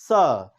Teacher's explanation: जिह्वा का अगला हिस्सा दांत के निचले हिस्से को टच करेगा